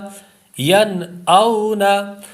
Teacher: حمزہ جو ہے جب آپ اس کو پڑھیں تو حلق کے نیچے والے حصے سے پڑھیں.